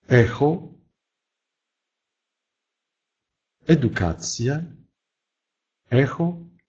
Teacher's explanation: Произносятся чуть более напряженные, чем в русском языке, но, в принципе, практически такой же, как и в русском языке. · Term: звук «э»